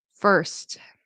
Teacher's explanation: Um sometimes very often I hear Spanish speakers say for or first instead of first. You really want that T to pop and you really want to pronounce that consonant cluster because in Spanish I know consonant clusters I don't think they exist.